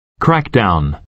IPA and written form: ˈkrækdaʊn (Crackdown)